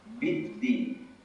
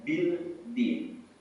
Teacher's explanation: Di situ ada alif lam yang tidak kita baca. Alif lam bertemu dengan huruf dal. kita langsung masuk tanpa membaca alif lam